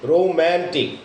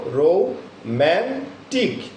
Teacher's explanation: ম্যান শব্দের অর্থে stress থাকার কারণে আমাদের ম্যানটা রৌ এবং টিকের থেকে একটু জোরে উচ্চারণ হবে, ফোর্সটা একটু বেশি হবে এবং ক্লিয়ারিটিটা একটু বেশি থাকবে, অর্থাৎ রোম্যান্টিক।